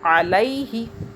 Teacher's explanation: या मद्दा नहीं हो रही, खींच नहीं रहे आवाज़ को। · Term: लीन